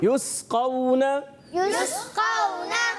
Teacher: اور بعض بچے یا بڑے قلقلہ کر دیتے, پڑھتے ہیں یسقون, تو ہلانا بھی نہیں, قلقلہ بھی نہیں کرنا, اور اس کو ساکن رکھنا ہے سیٹی کے ساتھ. قاف حروف مستعلیہ میں سے ہے, موٹے حروف میں سے, اس کو ہم نے موٹا کر کے ادا کرنا ہے